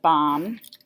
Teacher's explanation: you don't hear the B at the end of BOM